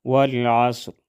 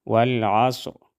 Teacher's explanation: صاد کو ہم موٹا ادا کریں گے اور وقف کی صورت میں را موٹا ادا ہوگا